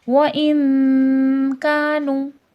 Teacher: کاف تو حرف مستعلیہ نہیں تھا، تو اس کا اخفا بھی نارمل ہوگا